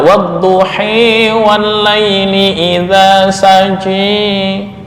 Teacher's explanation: Bunyi alif yang diucapkan antara fathah dan kasrah, atau antara alif dan ya. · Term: imalah kubra